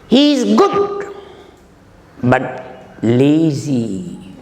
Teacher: He is good rising, lazy falling. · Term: rise and fall